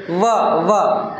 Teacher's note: आपल दात आहे खालच्या ओठाला स्पर्श होतो की नाही दात आणि ओठ व व हा खालच ओठ आणि · दाताचा आणि खालच्या ओठाचा स्पर्श होते म्हणून त्याला म्हणण्यात आलेला आहे दंतोष्ठ्य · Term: दंतोष्ठ्य वर्ण